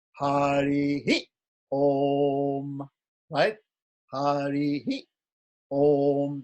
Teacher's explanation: when we get that Visarga, we echo the vowel that came before it.